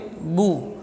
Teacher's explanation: ba huruf syiddah dan jahar. keluar dari dua bibir